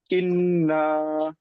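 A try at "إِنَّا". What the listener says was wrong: মাশাল্লাহ। আচ্ছা, ঠিক আছে, আপনার পড়া মাশাল্লাহ খুব সুন্দর হয়েছে।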